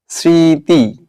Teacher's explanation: শব্দের আদিতে ম থাকলে উচ্চারিত হয় না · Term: ম ফলা